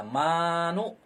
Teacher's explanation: ma itu dibaca 2 harakat karena itu mad asli